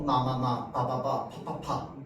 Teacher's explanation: 자, 그래서 일단은 입술 소리 어디 소리입니까? 말 그대로 양 입술을 이제 붙였다 뗐다 하면서 내는 소리입니다.